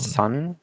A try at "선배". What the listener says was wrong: Son. Oh. Say oh. Oh. It's like more. You like sort of open up your mouth a little bit more. Oh. Son. Son. Oh. So. Oh. Sonbae.